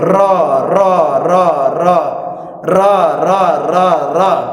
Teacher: र बोलते वक्त जीभ कांप उठती है। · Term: प्रकंपित व्यंजन